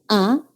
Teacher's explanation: Cuando articulamos A, primero nuestra lengua está en reposo y articulamos A, la lengua se queda en medio, no se adelanta ni se retrasa. Y más bien baja de su posición neutral